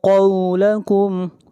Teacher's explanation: قاف کو موٹا پڑھیں گے، قاف حروف مستعلیہ میں سے ہے